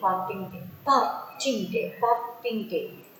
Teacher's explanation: Ting day is not stressed, but pa is stressed.